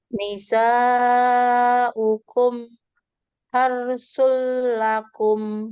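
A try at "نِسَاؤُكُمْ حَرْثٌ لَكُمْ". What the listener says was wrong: Jangan dijedah mimnya. Kan tadi mimnya dibacanya memang izhar, dibacanya dengan jelas. Tapi kita lihat sifat huruf nunnya itu, mimnya itu mengalir sebagian, tawasud atau bainiyah. Jangan dijedah, tapi dialirkan, disambungkan. Nisaukum harsul lakum.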